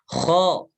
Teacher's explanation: Jadi bukan khe, bukan ditarik. Dibuka tapi enggak ditarik. Ya. Kalau yang dibuka mulutnya ketika fathah dibuka terus agak sedikit ditarik ke samping, itu ketika hurufnya itu yang tipis.